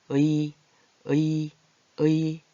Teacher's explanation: 땅을 나타내는 의와 사람을 나타내는 이가 합치면 의, 의, 의 이런 소리가 나요. 의로 시작했지만 이 같은 소리가 나거든요